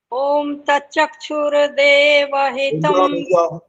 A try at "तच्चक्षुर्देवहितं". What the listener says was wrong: तच्चक्षुर, र पूरा बोल रहे हो, ये र पूरा नहीं होता।